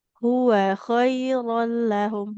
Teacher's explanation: Wawnya fathah tidak bertemu alif. Maka nggak boleh dipanjangkan.